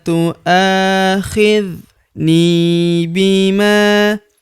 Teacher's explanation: Huruf ni kita panjangkan dua harakat karena terdapat ya sukun di depannya